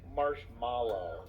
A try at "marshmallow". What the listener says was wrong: you have added extra letters in three consonants in there